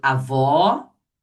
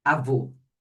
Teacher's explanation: o agudo, ele marca o som aberto. E o circunflexo marca o som fechado.